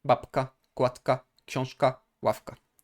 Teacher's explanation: We have always the K as the second consonant, therefore we have to soften the preceding sound.